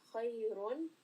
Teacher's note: again Ra is heavy because it has a dhammatain